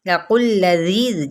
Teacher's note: قوف کی پیش کو لام کے ساتھ ملائیں گے